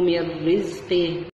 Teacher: عندنا إدغام بعد حرف الراء، إدغام بدون غنة